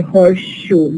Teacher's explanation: we have identicality of the two sounds they are as if they are one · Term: total assimilation